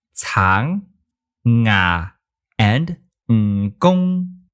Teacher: It's like an N with your tongue up and back, rather than up in the front.